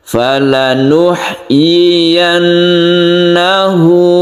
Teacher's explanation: kemudian tasdid nunnya kita dengungkan